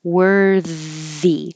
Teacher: there should be a longer delay when you make the TH because now your tongue has to go between the teeth a little bit and you need time for the airflow